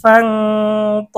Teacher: এখানে নুন সাকিনের পরে ত এসেছে, গুন্না করে পড়তে হবে।